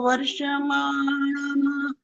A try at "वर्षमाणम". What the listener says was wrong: वस्ते भी गलत हुआ, वर्षमाणम भी गलत हुआ, अमृतत्व मानसु ये भी गलत हुआ। क्योंकि जहां पर आधा अक्षर आ जाए ना तब आपको उसको मिला करके बोलना जरूरी होता है, नहीं तो पूरा बन जाएगा। वर्षमाणम बोल दिया, वर्षमाणम इकट्ठा बोलना होता है उसको। जरा सी देर करी तो श पूरा हो जाएगा।